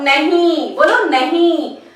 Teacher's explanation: मुंह और नाक दोनों से हवा निकल रही है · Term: अनुनासिकता